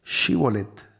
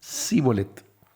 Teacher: Entonces los de galat les decían Bueno entonces digan shibolet Entonces los de Efraín no podían pronunciar la sh ves porque las regiones tienen sus características fonéticas y decían si bolet tenían que decir shibolet ellos decían zolet porque no podían pronunciarlo